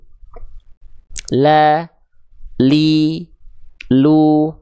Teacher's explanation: tepi lidah bagian depan kanan, yang kiri dan kanan di sini, keduanya menyusur sampai ke ujung lidah, disentuhkan ke arah langit-langit bagian depan. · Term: makhraj huruf lam